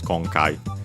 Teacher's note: accented on the first syllable